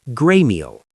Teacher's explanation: The final L goes up to the roof of your mouth, and the T in great connects to the M in meal, gray meal.